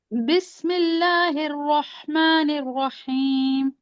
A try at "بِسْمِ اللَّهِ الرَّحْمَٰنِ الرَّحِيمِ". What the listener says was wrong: भी देखें, आपके हे और नून की जो जेर आ रही है ना, एक ही तरफ जा रही है। बिस्मिल्लाहिर्रहमानिर्रहीम।